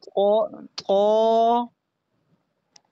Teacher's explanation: جہاں سے تا ادا ہوتا ہے نا وہیں سے طا بھی ادا ہوتا ہے، لیکن طا کو موٹا کرنا ہے